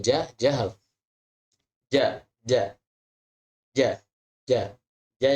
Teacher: yang benar itu adalah J yang tidak mengeluarkan nafas tidak yang menghembuskan banyak nafas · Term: huruf jahar